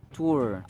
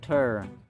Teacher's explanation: Tour, long u. Tur, schwa.